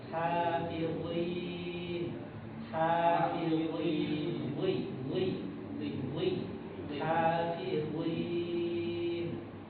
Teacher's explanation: dia kasroh tetap tebal